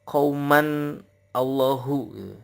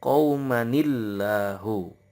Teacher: Kata qauman bertemu dengan lafaz Allah ada tasdid, itu harus ada nun wikoyahnya. Di Quran Arab tidak ada nun kecilnya, sehingga kita harus benar-benar hati-hati ketika cara baca.